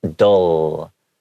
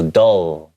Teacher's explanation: my tongue comes out and meets the teeth in the front. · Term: L sounds